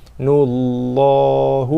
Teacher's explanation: Kemudian lam pada kalimah Allah, lam yang kedua ni dibaca dengan tafkhim tebal, sebab sebelumnya ada nun yang baris depan. Nullahu, 2 harakat.